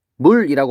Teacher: 여기 있는 기역이 이응으로 바뀌었어요 · 비음이 아닌 게 비음으로 바뀌니까 비음화라고 하면 되겠죠